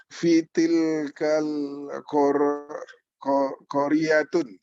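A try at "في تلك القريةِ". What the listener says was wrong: nah, ini sebentar. Jangan ditanwin karena ada alif lam. berarti tanwinnya hilang, ya kan?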